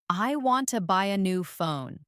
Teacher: The stress is on want, buy, and phone. While to and a new are softer and faster. This rhythm is one of the biggest differences between learners and native speakers.